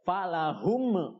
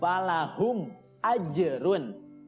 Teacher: Mim sukunnya harus dibaca jelas dan tidak boleh mantul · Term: idhar syafawi